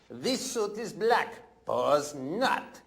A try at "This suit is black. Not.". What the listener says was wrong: No, you don't say pause.